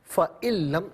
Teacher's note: اب یہاں پر آپ دیکھیں فَإِن نون ساکن ہے، نون ساکن کو لم کی لام کے ساتھ ملائیں گے اور لام کی آواز کو ادا کیا جائے گا